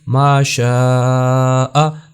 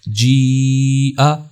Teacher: اس کی مقدار جو ہے وہ توسط ہے، یعنی 3 الف کے برابر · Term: مد متصل